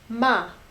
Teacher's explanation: So ma, like when we first learned Chinese, my teacher like really had us say those fourth tones. So ma, remember it goes all the way from the top down to the bottom. So it's a very sharp sound.